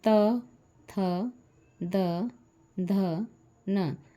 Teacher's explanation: जीवा दांतों से संपर्क या स्पर्श करके ही इसका उच्चारण हम कर पाएंगे